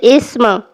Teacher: احساس ہوا جیسے آہستہ سے سٹی بج رہی ہے اسم میں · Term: سین